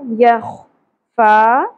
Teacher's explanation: خا پر ہو گا خراش کے ساتھ